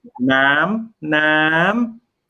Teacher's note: oh, it's high tone, but actually it's high going higher.